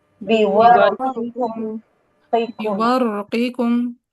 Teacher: بورقكم کو یہ را کا سکون کے ساتھ پڑھیں گے امام حمزہ